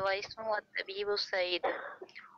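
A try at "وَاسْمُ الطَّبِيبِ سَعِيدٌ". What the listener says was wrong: इसको पढ़ेंगे वस्मु, वस्मु तबीबी सईदुन, क्योंकि अलिफ के ऊपर देखिए हमजातुल वसल का साइन लगा हुआ है, ठीक है।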